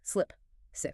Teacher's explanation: For the short I in slip and sick, your mouth must be completely relaxed. Your jaw drops just a tiny fraction of an inch. The tongue is loose and the sound is sharp and quick.